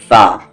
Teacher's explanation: फा ऊपर के दांतों का कॉर्नर और नीचे के लिप्स